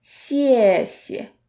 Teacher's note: the second character often becomes the neutral tone, meaning that it's less stressed and it sounds much softer.